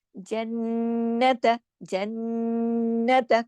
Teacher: काफी देर आवाज को हमने नाक में छुपाया, क्यों? क्योंकि नून की तो जाती सिफ्त में गुन्ना है, और फिर या तो दो नून है, एक नजर आ रहा है एक छुपा हुआ है, कि कैसे हमें पता है कि छुपा हुआ है? · नून पे गुन्ना होगा, क्योंकि देखिए नून पे तशदीद है, इसको बड़ा गुन्ना होगा, अकमल गुन्ना कहलाता है।